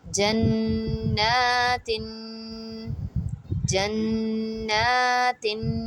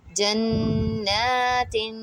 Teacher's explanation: It is because the noon has standing fatha on it, means khadi zabar on it, so we have to stretch that for 1 to 2 seconds because of that, not because of the gunna. Because of the gunna, we are stretching that from the mid, from the point where the noon mushaddad is joining with the jeen.